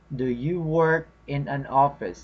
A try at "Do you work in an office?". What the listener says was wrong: So make it a bit faster. Do you work in an office? Yes, that is what we call connected speech. They are connected because you can say it as fast as you can because the next word has a vowel, or the word after that has a vowel. They are connected because of the vowel.